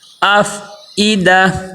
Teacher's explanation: حمزہ کو عین نہیں بنانا، حمزہ کو حمزہ ہی کی آواز آئے، حمزہ، یہ حمزہ کی جو ہے نا ہا کی آواز نہیں آئے گی، بلکہ حمزہ میں جو آواز آتی ہے وہ ای او تھوڑا زور لگائیں گے تو عین کی آواز پیدا ہو جائے گی، بلکہ منہ کے خالی حصے سے یہ حمزہ ادا ہوتا ہے۔